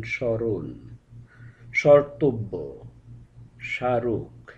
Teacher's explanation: যেমন স্মরণ, স্মর্তব্য, স্মারক, এই শব্দগুলোর প্রতিটির ক্ষেত্রে আদি বা প্রথম ব্যঞ্জনধ্বনির সঙ্গে মফলা যুক্ত ছিল, প্রতিটি ক্ষেত্রেই মফলা বাদ দিয়ে উচ্চারিত হলো।